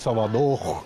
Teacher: salvador não pronuncia esse r